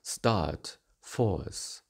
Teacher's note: conservative forms of start and force have a closing diphthong